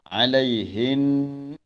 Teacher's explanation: Bila kita wakaf di situ nun yang bersabdu, kita wakaf dengan gunnah, dengung pada nun yang bersabdu. Walaupun wakaf tapi masih ada dengungnya.